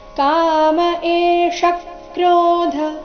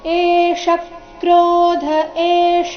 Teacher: ಸ್ವರ ಎ ದೀರ್ಘ ಅದರ ನಂತರ ಮೂರ್ಧನ್ಯ ಷ ರಸ್ವ ಕಾಮ ಏಷ ಕ್ರೋಧ ಇಲ್ಲಿ ಷಟ್ಕೋನದ್ದು ಷ ಮೇಲೆ ಆಘಾತ ಏಷ ಕ್ರೋಧ ಏಷ